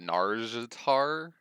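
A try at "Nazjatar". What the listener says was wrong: There's an S snuck in there somewhere.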